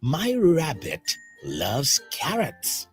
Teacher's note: the first syllable, ra, in rabbit sounds louder than the second syllable